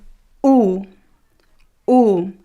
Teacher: this sound oh in Portuguese is closer to the sound ooh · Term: closed o